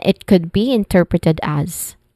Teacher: So it ends with a buzzing sound